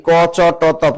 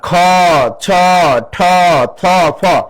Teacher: এগুলো শ্বাস বেশি লাগে উচ্চারণে এজন্য মহাপ্রাণ ধ্বনি